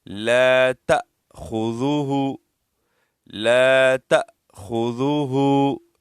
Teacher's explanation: ہا کے اوپر الٹا پیش ہے، اس کو ایک الف کی مقدار ہم کھینچیں گے